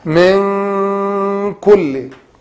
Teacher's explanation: For 2 count, like this. Hide the sound of noon, and by not saying the noon clearly, as I mentioned, and also by holding the sound of hiding for 2 count